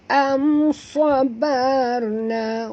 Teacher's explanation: Mim mati bertemu sad, tak boleh dengung